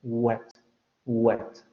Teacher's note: Pero cuando hacemos una U, aunque el dorso se va hacia la parte de atrás, no se pega tanto como en las aproximantes. Hay vibración de cuerdas vocales, por eso también suena muy similar a una vocal, y el aire sale por esa zona o esa cavidad oral.